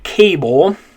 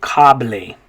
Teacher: in english we would say cable notice it's making an a sound but in spanish it's going to be an ah sound